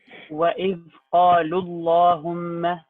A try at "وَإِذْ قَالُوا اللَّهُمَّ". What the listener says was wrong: Stress it a little bit more with Allahumma. وإذ قالوا اللهم.